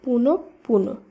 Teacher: পরে রয়েছে প বর্ণটি তাই প বর্ণটির দীপ্ত উচ্চারণ হবে বা প বর্ণটি দুইবার উচ্চারিত হবে